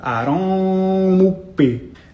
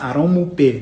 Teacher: This is what we call a labial velar plosive. It's a double articulation. That means you're pronouncing a K sound and a P sound at the same time.